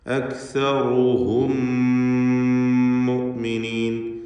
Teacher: ഈ മീമിനെ രണ്ടാമത്തെ മീമിലേക്ക് ലയിപ്പിച്ച് ഒറ്റ ശബ്ദുള്ള മീമാക്കി മണിച്ച് ഇദ്ഗാം ഷഫവി നൽകി മണിച്ചുകൊണ്ട് ഉച്ചരിക്കണം. ഇദ്ഗാം മിസ്ലൈൻ സഗീർ എന്നും പേര് പറയാവുന്ന ലയിപ്പിക്കൽ നൽകി ഉച്ചരിക്കുക.